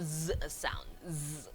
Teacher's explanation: Voiced alveolar fricative, made by putting the tip of the tongue nearly on the alveolar ridge